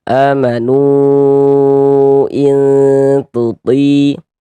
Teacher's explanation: Sesuai dengan rumus 2 warna hitam itu. Kemudian mad tabi'i bertemu dengan huruf hamzah di lain kata atau dalam 2 kata yang berbeda, maka dia berubah menjadi mad jaiz mungfasil. Panjangnya 4 sampai dengan 5 harokat